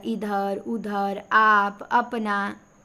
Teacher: इधर बोलेंगे तो नाक पे थोड़ा जोर नहीं पड़ेगा। नाक से आपकी कहां हवा निकलेगी? केवल मुंह से बोला जाएगा। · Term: निरनुनासिक